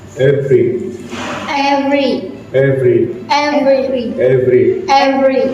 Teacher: Okay, good. For f, your teeth touch your lower lip and the air keeps flowing.